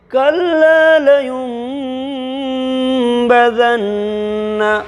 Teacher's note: اقلاب ہوگا اس لیے کہ نون ساکن کے بعد با آئی، اس لیے نون ساکن کو میم سے بدل کر کے غنہ اور اخفا کے ساتھ پڑھیں گے